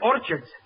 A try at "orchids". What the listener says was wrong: It's not orchids, it's orchids. The CH is pronounced like K.